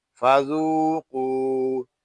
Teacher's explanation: قاف واو پیش قو، فذوقو. یہاں ذال اور قاف کو ہم ایک الف تک کھینچ کر پڑھیں گے کیونکہ یہاں واو مدہ ہو رہا ہے